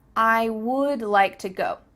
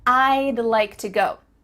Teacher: to go do you see how we can speak quicker because we're cutting off all the sounds in the word would except for that final d